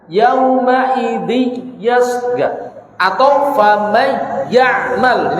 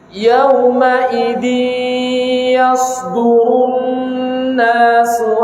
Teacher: Bukan ditekan, tapi diidghamkan, masukkan ke hidung. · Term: idgham bi gunnah